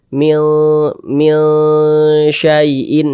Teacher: Huruf shin termasuk salah satu huruf ikhfa hakiki dan dia termasuk kepada ikhfa hakiki awsat lagi. Jadi kita samarkan huruf nunnya, kemudian juga kita dengungkan